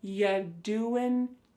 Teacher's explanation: When we say you doing anything fun instead, you're going to hear y doing ya. The word you is reduced to y.